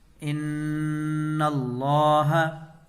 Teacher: نون میں گنہ ہوگا، وہ اس لیے کہ نون کے اوپر تشدید ہے۔ اس سے پہلے والے سبق میں تختی نمبر 13 تشدید میں ہم لوگوں نے پڑھا تھا کہ نون اور میم پر تشدید ہو تو غنہ ہوگا، اور غنہ کی مقدار 1 الف ہے۔